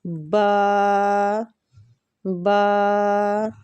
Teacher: با ہونٹوں کے گیلے حصے سے ادا ہوتی ہے